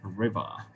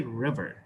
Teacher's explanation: Now the British people, they will drop out the final R.